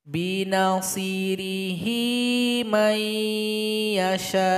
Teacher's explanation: Kalau digabung, hi dipanjangkan 2 detik. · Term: maksilah qasirah